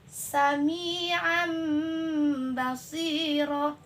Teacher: Nah, jadi harus yang tanwin itu berubah menjadi ba gitu. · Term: iklab